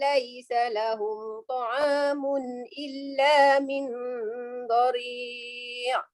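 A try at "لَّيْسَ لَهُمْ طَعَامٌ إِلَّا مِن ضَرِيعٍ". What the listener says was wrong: Okey, nun itu dibesarkan sedikit, raikan pada huruf dad. Illa min dari'.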